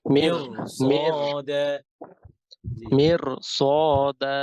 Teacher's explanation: যদি একই শব্দের মধ্যে র সুকুনের পরে হ্যাভি লেটার হয়, যেমন এখানে সদ হ্যাভি লেটার, তখন র মোটা হবে, মিয়র কি হবে, মিয়র, মির তখন মির হবে না।